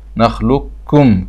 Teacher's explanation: كأن القاف مش موجودة خالص وتشدد الكاف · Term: الإدغام التام